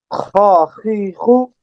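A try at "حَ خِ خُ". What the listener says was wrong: Very good. Next.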